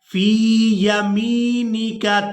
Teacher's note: ہم نے میم کو یا مدہ کے ساتھ ملاتے ہوئے کھینچ کر ادا کرنا ہے